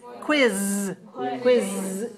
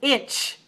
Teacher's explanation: quiz quiz voiced inch voiceless